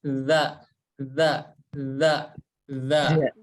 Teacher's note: huruf Zal itu dari ujung lidah kita, maaf ya, ujung lidah, ini nempel ke ujung gigi seri yang atas